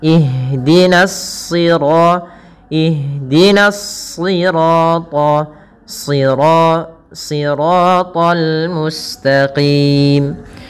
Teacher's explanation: yang ditebalkan adalah huruf shadnya yang di mana di sini huruf shad termasuk huruf-huruf istla yang dia pangkal lidahnya terangkat dan menebal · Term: huruf-huruf isti'la